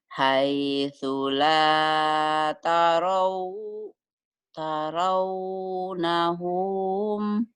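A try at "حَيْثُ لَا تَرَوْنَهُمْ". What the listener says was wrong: Pendek. Haitsu la tarawnahum. Ulang.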